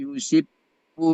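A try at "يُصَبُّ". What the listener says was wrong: Sodnya itu fathah. Dari yu aja. Yusabbu, coba.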